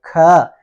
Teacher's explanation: ख थोड़ा सा लंबा सांस लेके बोलना पड़ता है। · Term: महाप्राण